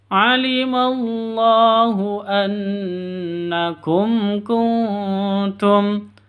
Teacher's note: mim mati bertemu dengan Kaf cara bacanya jelas terang tidak boleh dengung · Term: izhar syafawi